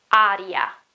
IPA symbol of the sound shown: a